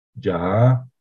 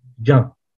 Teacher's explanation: además por supuesto de la diferencia entre oral y nasal también existe una diferencia tonal